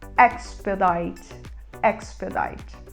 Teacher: a gente fala com E aberto